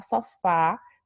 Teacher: o timbre que a gente vai ter é o timbre aberto